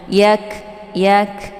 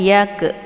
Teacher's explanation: ini sifatnya hamas jadi ada anginnya, bukan dipantulkan hurufnya.